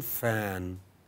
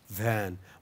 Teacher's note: When lower lip moves towards the upper teeth, you get F as in fan, V as in van.